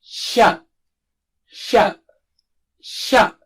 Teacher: the middle of the tongue is close to touching the palate or roof of the mouth when you say sha.